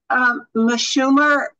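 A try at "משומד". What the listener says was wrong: No, Meshumed with a D at the end. Meshumed.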